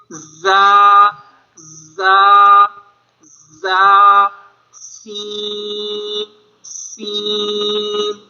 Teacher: زبان کی نوک اور دونوں دانتوں کے اندرونی کنارے سے ادا ہوتے ہیں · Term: حروف صفیریہ